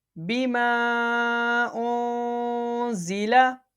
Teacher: حروف مدہ کے بعد حمزہ دوسرے کلمے میں مد منفصل اور مد منفصل کو بھی متصل کی کے برابر 2 الف کی مقدار کے برابر کھینچ کے پڑھا جائے گا